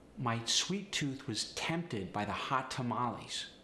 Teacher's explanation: Sometimes you'll notice people with a Polish accent really overemphasize the T.